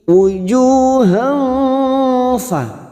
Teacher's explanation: pada saat menyamarkan bunyi fathah tanwin, bibir kita siap membunyikan huruf fa, kita samarkan 2 atau 3 harokat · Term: ikhfa hakiki